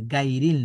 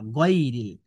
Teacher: অনেকেই বলে দেখবেন গাইরিল মাগদুবি আলাইহিম, গাইরিল বলে, গাইরিল না গইরিল, অর্থাৎ ফাতহার উচ্চারণে আকার পড়া যাবে না